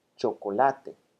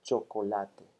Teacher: every single syllable here has more or less the same prominence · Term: syllable time rhythm